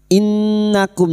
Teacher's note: nun yang bertasdid gunnah musyaddadah kita dengungkan selama 3 harokat